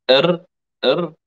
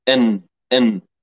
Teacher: الراء لا يشترك في إخراجها الخيشوم، أما النون فيشترك في إخراجها أيضا الخيشوم.